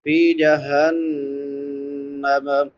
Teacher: نون مشدد ہے، شاد والا نون، اس پہ ہمیشہ غنہ ہوتا ہے۔ غنہ آواز کو ناک میں چھپا کر ادا کرنا ایک الف کی مقدار کے برابر